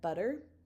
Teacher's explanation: because we go from a voiced vowel to a voiced vowel, our tongue will shift to that t to d in American forms, with there's a little bit of a schwa on there as well.